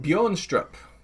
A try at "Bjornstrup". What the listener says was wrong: Isn't it just Yornstrup? I don't think you pronounce the B.